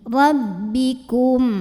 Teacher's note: Kesalahan yang sering terjadi adalah ada bunyi hidung masuk ya, rabbikum gitu, ada m-nya. Nah, ini tekanannya di bibir, jangan sampai masuk ke hidung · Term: ba tasydid